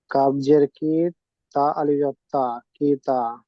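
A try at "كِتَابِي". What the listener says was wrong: তা আলিফ জবর তা পড়তে হয় না, তা আলিফ জবর টান দিতে হয় না, বিনা টানে পড়তে হয়।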